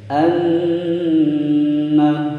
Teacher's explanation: nun bertasydid ditekan ditahan selama dua ketukan. Anna lana, lanya pendek, na panjang dua ketukan.